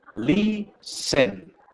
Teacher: Tiene dos sílabas. Listen, porque no se pronuncia la T.